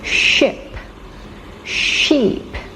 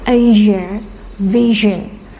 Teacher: we have unvoiced sh. Ship, sheep. Voiced sh, like Asia, vision. So we have two ways to pronounce sh, sh and zh.